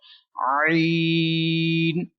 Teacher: This letter is stretched equal to 3 seconds, and this letter is pronounced from middle part of your throat.